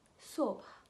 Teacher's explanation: Entendez-vous ce H à la fin qui est un H bien soufflé?